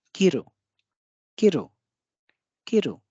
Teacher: जो पहला शब्द है इसमें की पे अधिक बल है, रू पे कम बल है, तो ये है किरु किरु किरु। हम की को स्पष्ट बोल रहे हैं, लेकिन रू को थोड़ा सा कम